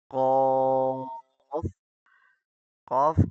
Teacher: اندر سے آواز کو موٹا ادا کرنا ہے، نہ کہ ہونٹوں کو گول کر کے